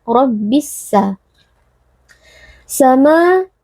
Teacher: memasukkan dan meleburkan huruf lamnya ke dalam huruf Sin sehingga huruf lam tidak terdengar lagi dan huruf Sin menjadi seperti berperti huruf yang bertasydid rabbissa sama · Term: alif lam asy-syamsiyah